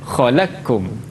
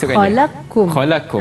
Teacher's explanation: Qaf tu idgham masuk ke dalam kaf.